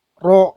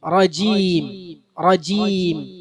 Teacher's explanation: ചുണ്ട് കൂർപ്പിക്കരുത് റ ഉച്ചരിക്കുമ്പോൾ